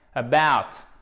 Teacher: Accent tonique sur la deuxième partie du mot.